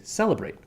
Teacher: celebrate has stress on the first syllable